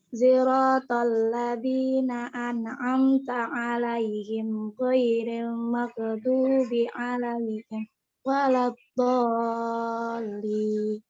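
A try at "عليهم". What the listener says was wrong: alaihumnya itu haknya itu kan pakai dhammah. Alaihum siratal sirat ya. Siratal ladzina an'amta 'alaihim ghairil maghdubi 'alaihim waladdallin.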